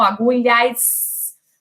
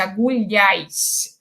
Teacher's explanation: No Rio de Janeiro, em Salvador, em Fortaleza, em Belém e outras cidades, o S pós-vocálico é realizado como chiante, com o dorso da língua tocando o céu do palato. Então, por exemplo, na palavra agulhas, lhas, né, esse S final é chiante, agulhas.